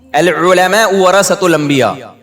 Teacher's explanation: تو پیسوں کا حساب کیوں نہیں دے رہا, علماء کا احترام, پھر علماء عین نا پورا حلق سے نکلتا ہے